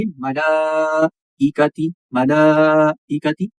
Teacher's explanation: ایک الف کے برابر ہم نے کھڑی حرکت کو کھینچنا ہے اور 3 تا 4 الف کے برابر ہم نے بڑی مد کو کھینچنا ہے، لیکن حمزہ کو ہم نہیں کھینچیں گے، حمزہ کے نیچے زیر ہے، یہ بڑی حرکت ہے، اس کو ہم نہیں کھینچیں گے۔